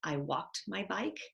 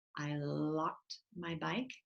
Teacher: A lot of kids will use the W sound for their L. So they might say, I walked my bike.